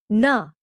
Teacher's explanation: Its sound is like that of the na, as in the word nan, but articulated with a curled up tip of the tongue bouncing off the front of the palate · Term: retroflex nasal